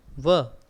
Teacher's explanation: हमारे होठ भी है गोल हो गए और दांत है वो थोड़े से टच हो गए एक दूसरे के, इसलिए इनको बोलते हैं दंत और ओष्ठ, दंतोष्ठीय।